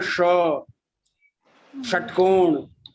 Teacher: जीभ के ऊपर वाला हिस्सा होता है, इसलिए मूर्धन्य है। ये जीभ के ऊपर वाले हिस्से में जीभ टच करके बोलते हैं